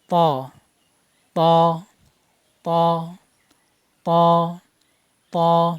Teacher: ত হরফ উচ্চারণের সময় তার মাকরাজ হলো জিহ্বার আগা সামনের উপরে 2 দাঁতের গোড়ার সাথে লেগে উচ্চারণ করবেন। ত হরফ মোটা হবে। যে উচ্চারণের সময় গোড়া উপরে তালুর সাথে লাগিয়ে দিবেন। ত ত ত ত ত মোটা করবেন।